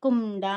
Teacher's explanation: దగ్ని చి దగ్ని అనేసని. ఇంకా కుండ అంటే కు తర్వాత అనాకారానికి డా ఒత్తు వస్తుంది. ఇది ముక్కుతో పలికే ఒక అనునాసిక ధ్వని. కుండ అనేసని.